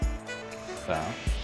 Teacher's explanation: it's the voiceless alveolar fricative. Even za is an alveolar fricative, but it's voiced.